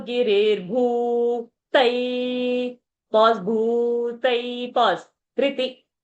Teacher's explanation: Riti is again short sound. So Giri, Riti, short sound. But Bhu, Tai, they are long sound. So when a long sound comes, you pause on that alphabet.